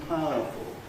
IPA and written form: ˋpaʊəfl̩ (powerful)